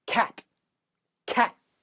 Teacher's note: You don't need to make your T's that strong. In a standard American accent, the T is a stop.